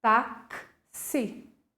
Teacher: Perceberam que eu tenho um som de KS aqui, ó, no lugar do X?